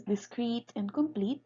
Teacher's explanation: adjectives such as discrete and complete carries the stress on the ultimate position because the syllable in the ultimate position has a heavy vowel